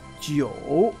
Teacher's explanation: 9 is the next tone, which is jiu. It's a down up.